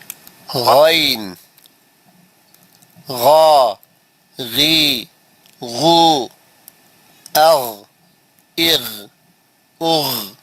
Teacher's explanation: This is pronounced from the highest part of the throat, क्योंकि ये दो हर्फ दोनों का मखरज ऊपरी हलक है ना, highest part of the throat.